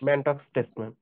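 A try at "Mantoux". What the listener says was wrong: ম্যানটক্স না মন টু, বানানটা ম্যানটক্স, উচ্চারণ মন টু।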